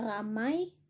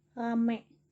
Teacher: Lalu ada fonem I diucapkan menjadi E.